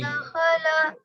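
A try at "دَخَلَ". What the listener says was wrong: दखला, खा को मोटी आवाज में पढ़ते हैं।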